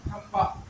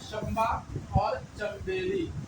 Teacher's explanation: जब भी नून साकिन के बाद बा आए तो उस नून को मीम से बदल कर पढ़ना है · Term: नून मकलू